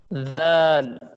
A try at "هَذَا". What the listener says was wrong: زال ہے نا، تو ہا زل مت کرو نا، زا مت بولو. زال. ہا زل، ہا زل زل، ہا زل بیت. رب هذا البيت، اس طرح پڑھنا ہے.